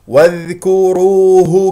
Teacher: الكاف والراء والهاء الاخيره مضمومه نضم الشفتين فيها وفي الواو وانتبه الراء مفخمه لانها مضمومه واذكروه كما هداكم كما افتح الفم